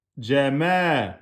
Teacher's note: Mim fatha med. Med, ça veut dire prolongation. Deux temps.